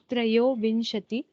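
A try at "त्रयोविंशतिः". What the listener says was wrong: You have to produce a little bit of the Visarga.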